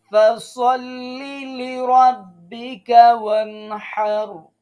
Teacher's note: গলার মাঝখান দিয়ে চেপে ধরে হা উচ্চারণ করতে হবে